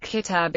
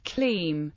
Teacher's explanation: one of the most notable features of Maghrebi Arabic dialects, including Algerian Arabic, is the collapse of short vowels in some positions.